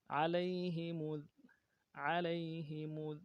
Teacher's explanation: یا لین ہے، بغیر کھینچے پڑیں گے. ہا کو نرم سے ادا کریں گے.